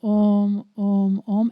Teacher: you reach here is the vibration of the ooh and then it ends in the head with the nasal sound m when you you close your lips and there is after this nasal sound there is a vibration